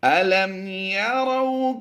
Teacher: یہاں پر میم ساکن کے بعد حرف با اور میم کے علاوہ یا آ گیا تو یہاں پر اظہار شفوی کرتے ہوئے ہم نے غنہ نہیں کرنا، بغیر غنہ کے پڑھیں گے